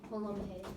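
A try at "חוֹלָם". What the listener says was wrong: cholam hay. It's actually cholam hay. Okay, yeah, it's more the ch sound. Cholam, it's the het. Cholam hay. It's a cholam hay.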